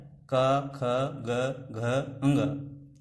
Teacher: का वर्ग का उच्चारण स्थान कंठ है। कंठ आपके कंठ से इसका उच्चारण होता है